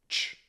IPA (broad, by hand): tʃ